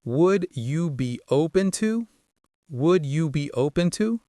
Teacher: The stress is on O in open. The would you be often blends into would you be.